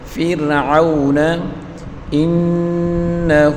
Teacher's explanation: کر پڑھیں گے، فرعون، را کو باریک پڑھیں گے، فرعون انہ، نون مشدد غنہ کے ساتھ پڑھیں گے